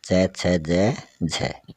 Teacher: फिर आगे है स्पर्श संघर्षी व्यंजन, इनके उच्चारण में स्पर्श का समय अधिक होता है, वह बाद का संघर्षी होता है